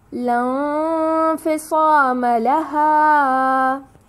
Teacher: نون ساکن کو ہمیں چھپا کر ادا کرنا ہے اور 4 کا مد دینا ہے